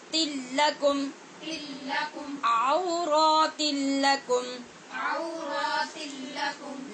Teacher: نون تنوین کے بعد لام حروف یرمالون میں سے ہے جہاں بے غنہ ادغام ہوتا ہے